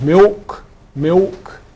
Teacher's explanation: L vocalization is that the dark L turns into O.